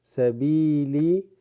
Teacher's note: the ya with a sukun extends this ba